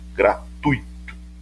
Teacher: O e o i são pronunciados juntos